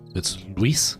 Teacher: the Spanish inflection in the U is very minimal, so it almost sounds like Lis. It's Luis. But in English, you emphasize the U a lot more, so it's Luis.